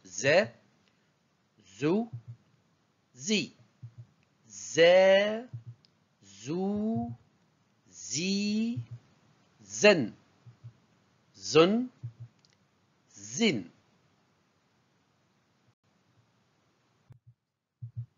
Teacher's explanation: se prononce au niveau des dents, exactement au niveau des incisives centrales et latérales et de la pointe de la langue